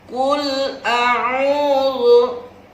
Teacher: Kalau huruf ain agak ada suara di hidungnya.